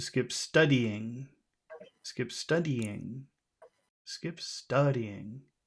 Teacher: I would emphasize the word skip here